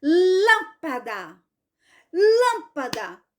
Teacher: Então essa palavra lâmpada ela é proparoxítona por quê Porque a sílaba mais forte é a antepenúltima não é a última não é a penúltima EA antepenúltima certo